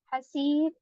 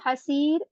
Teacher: ہا کی آواز بیچ والے حلق وسطی حلق سے نکالنی ہے، اور کھینچتے ہوئے اس کو یہاں پر آپ کو 4 حرکات تک پڑھنا ہے.